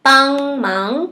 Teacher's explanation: A minha língua é embaixo, né? Tá? Empurrando o som pra sair pelo nariz